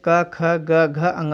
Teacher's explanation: आप इसको बोलेंगे तो आपको आभास होगा ये कंठ के द्वारा जो है क वर्ग वाले व्यंजन बोले जाते हैं